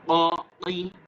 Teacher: গলার ভেতর থেকে একটু বাড়ি খেয়ে সাউন্ড আসবে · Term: কফ